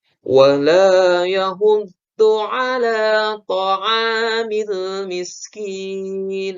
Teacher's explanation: Ain itu ada di pangkal ya. Pangkal tenggorokan jadi ain.